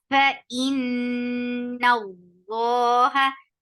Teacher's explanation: you have to make your Allah subhanahu wa ta'ala's name long and heavy because there is fatha before it. · There will be a akmal gunna. So keep the sound in your nose for a long time. فَإِنَّ اللَّهَ, noon will be light. · noon will be light. As soon you will touch Allah subhanahu wa ta'ala's name, lam will be heavy. And it is by default, it's long, always long.